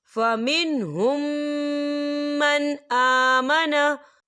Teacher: यहाँ मीम साकिन है और मीम साकिन के बाद फिर मीम आ रहा है, तो यहाँ पर इदगाम शक्फी हो रहा है, तो हम इसे गुन्ने के साथ पढ़ेंगे।